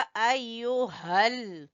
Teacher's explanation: हा को गले के आखिरी हिस्से से